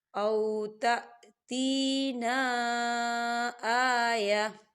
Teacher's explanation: وقف کی صورت میں ہم آیتن نہیں پڑھیں گے، اسے کیا پڑھیں گے؟ آیہ، تا جو ہے وہ ساکن ہو جائے گا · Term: وقف مطلق